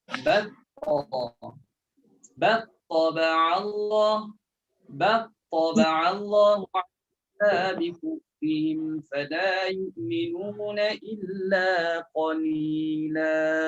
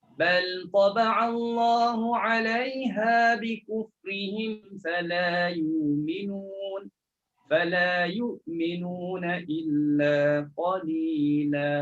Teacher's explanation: Boleh baca idgham kan lam dalam ta, boleh baca izhar kan lam dalam ta.